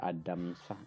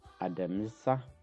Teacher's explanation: the ma sound is silent or semi-silent, so we don't need I over there.